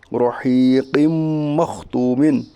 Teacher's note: قاف کے نیچے دو زیر کی تنوین ہے، دو زیر کی تنوین کے بعد حروف یومن کے 4 حرفوں میں سے میم ہے، اس لیے ادغام ناقص ہوگا، یعنی ملا کر غنہ کے ساتھ پڑھیے۔ اس کا ایک اور اجرا ہے کہ میم کے اوپر تشدید ہے، تشدید والے حرف کو مشدد کہتے ہیں، میم مشدد کے پڑھنے میں ایک الف کے بعد غنہ ہوگا، ٹھیک۔ · واو ساکن سے پہلے پیش اس لیے واو مدہ ہوگا، واو مدہ کو ایک الف کے برابر کھینچ کر پڑھیے